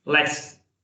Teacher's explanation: t will get reduced to half, and there will be just slight touch of t when you will be pronouncing it.